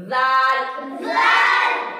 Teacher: जबान की नोक सनाया उलिया के किनारे को लगेंगे, यानी ऊपर के दांतों के किनारे को लगेंगी